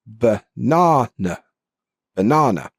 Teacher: And this is like a neutral vowel sound. And it's commonly found in the unstressed syllables in words. Right? So best example I can give you is the word banana. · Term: schwa sound